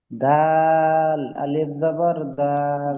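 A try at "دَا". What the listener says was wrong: দাল আলিফ নয়, দাল জাবার দা। জা, আলিফ জাবার জা, দাল জাবার দা, জাদা।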